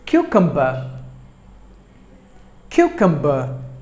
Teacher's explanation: just 3 syllables but the stress falls on the first syllable